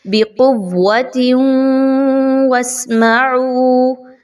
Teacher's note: تنوین کی آواز کے ساتھ واو کی آواز کو مرج کریں گے, ملا دیں گے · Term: ادغام مع الغنہ